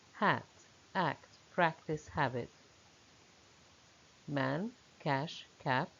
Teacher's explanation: It is open, and it is front. So it is a short, open, front vowel, and the lips are slightly spread. Words with a in them have the spelling of a, hat, act, practice, habit, man, cash, cap.